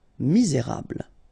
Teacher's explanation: don't insist on the final E here. You get this bl sound at the end. Okay, misé, et because you've got this accent aigu, rable.